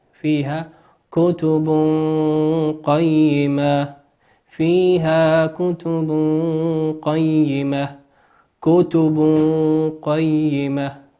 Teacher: تنوين أتى بعده حرف القاف، والقاف من حروف الإخفاء